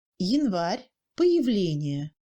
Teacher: Le «я» est prononcé presque «и». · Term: premier degré de réduction